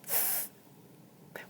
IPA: θ